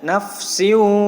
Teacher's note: Huruf waw termasuk huruf idgham bigunnah, ya. Jadi bacaan ini disebut idgham bigunnah, dibaca dengung yang lama juga, sama setara dengan 2 ayunan dengung yang lamanya.